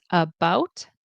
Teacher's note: Bout is stressed in about.